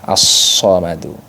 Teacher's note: Sofir itu adalah desis atau siulan. Siulan sod itu mirip dengan siulan angsa.